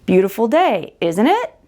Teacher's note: This is a tag question when you say, Isn't it? Remember, your intonation goes up.